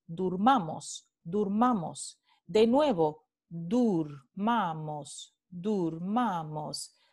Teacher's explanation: la U es parte de una sílaba átona, no es tónica, es átona. Y ocurre delante de la A tónica. · Vemos los mismos fenómenos con este otro caso de cerrazón vocálica, donde la vocal media O se vuelve en la vocal alta posterior cerrada redondeada U